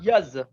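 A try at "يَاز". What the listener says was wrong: ইয়াজ, ইয়াজ না, ইয়াজ, জিমটাকে টাইট করতে হবে, আর ইয়াজ বললে এটা হয়ে যাবে, জাল হয়ে যাবে, ইয়াজ,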